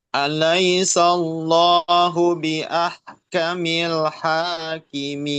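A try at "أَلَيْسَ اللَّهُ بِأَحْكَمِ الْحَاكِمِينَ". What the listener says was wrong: Nah, itu hamas kafnya itu masih belum konsisten ya. Haki. Nah, kalau hakimin, nah itu kof nanti jadinya. Hakimin. Nah, itu kof. Ini kaf. Haki. Nah, hakimin.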